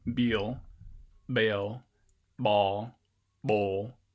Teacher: there's also a possibility that you might get voicing before the release of the bee